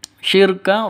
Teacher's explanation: Asyirka, inna syirka, alif lam syamsiyah, tandanya sukun setelah alif, karena setelah alif lam ada tasydid. Syirka, ro-nya tebal, jangan tipis tapi tebal, harus tebal